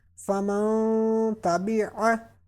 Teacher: pronounce this noon sakina with gunna, with taking sound into your nose